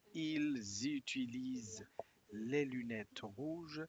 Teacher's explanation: Troisième personne, no se pronuncia ENT.